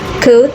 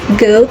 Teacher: Ke is voiceless, while ge is voiced. They are both velar plosives produced at the back of the tongue near the soft palate.